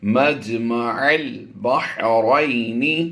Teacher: عین کو لام سے ملائیں گے